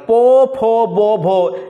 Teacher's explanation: এগুলো উচ্চারণ হচ্ছে কিন্তু ঠোঁটে